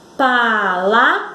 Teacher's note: Vejam que o vrá foi pronunciado com mais força. É a sílaba tônica.